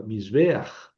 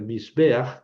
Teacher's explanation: se juntan dos vocales, ¿verdad? En una sola sílaba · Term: diptongo